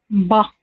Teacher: دونوں ہونٹوں کے گیلے حصے سے با ادا ہوتا ہے